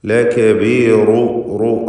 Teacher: ലകബീറു റാഇന് തഫ്ഖീം കൊടുക്കുക